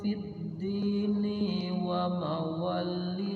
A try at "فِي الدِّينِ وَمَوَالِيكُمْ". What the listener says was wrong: wanya panjang, li-nya panjang.